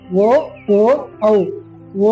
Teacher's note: ಓ ಅನ್ನೋದು ಕಂಠದಿಂದ ಉತ್ಪತ್ತಿಯಾಗಿ ತುಟಿಯಲ್ಲಿ ಬಂದು ಕೊನೆಗೊಳ್ಳುತ್ತೆ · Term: ಕಂಠೋಷ್ಟ ಅಕ್ಷರಗಳು